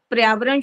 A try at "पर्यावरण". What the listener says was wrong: पर्यावरण नहीं बोलना, पर्यावरण बोलना होता है, ठीक है। प्र जल्दी नहीं करो, प्र से फिर पर्यावरण बनता है, पर्यावरण। फिर य के ऊपर होता है ना, वो बनता है। नहीं तो पर्या ऐसे लग रहा है प्र वाला शब्द है, पर्यावरण।